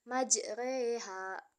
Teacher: pada dasarnya setiap Alif yang berharakat fathah dibaca a namun khusus pada lafaz majreha dibaca e · memiringkan bunyi harokat fathah ke arah bunyi harokat kasroh atau membengkokkan huruf alif ke huruf ya. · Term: imalah